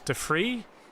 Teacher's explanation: Pronounced De Vries as Fries, but the S voiceless.